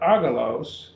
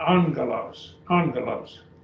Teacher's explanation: we have two gammas together they get an ng sound